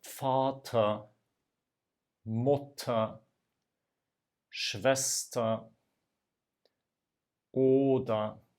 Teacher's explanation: You can hear no E, no R at the end of these words.